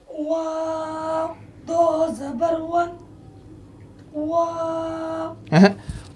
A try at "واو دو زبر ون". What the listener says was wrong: وا نہیں, واو دو زبر ون, واو دو زبر ون. دوبارہ اگین, دوبارہ.